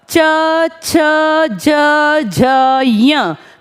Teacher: च बोलते हैं तो प्रेशर थोड़ा सा ऊपर है, जिसे हम कहते हैं तालु, और इसलिए इन्हें कहा जाता है तालव्य व्यंजन। तालु गले के थोड़ा सा ऊपर।